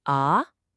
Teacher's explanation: The second tone goes up like you're asking a question.